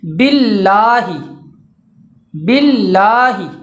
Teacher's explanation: تو لفظ اللہ سے پہلے اگر زیر آ جائے تو لفظ اللہ کا جو لام ہوگا وہ ہمیشہ باریک پڑھا جائے گا